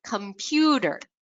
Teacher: You can hear how that pu is a little bit louder, longer, and at a slightly higher pitch, that vowel is really stretched out.